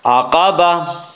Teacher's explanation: گول تا وقف کی صورت میں ہائے ساکنہ بن جاتی ہے